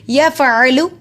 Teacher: عین حلق کے درمیان سے ادا ہوتا ہے